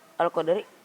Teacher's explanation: cara membacanya harus bergerak dan berbunyi seperti membalik huruf dal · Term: qalqalah sugro